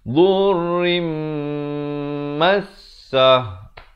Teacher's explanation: Ra tanwin di bawah asalnya bunyi rin. Tapi datang mim jadi rim. Tapi jangan lupa dengungkan 2 harakat. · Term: gunnah